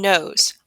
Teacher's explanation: The tongue touches the ridge behind the top teeth. The sound travels through that nose.